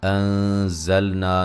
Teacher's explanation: نون ساکن کا یہاں باریک اخفا ہے، یہاں الف مدہ ہے۔